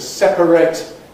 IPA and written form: ˈsepəreɪt (separate)